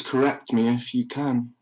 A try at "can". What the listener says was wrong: How do you get 2 fucking syllables out of the word can? Can.